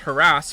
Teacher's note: pronounced harass with the emphasis on the second syllable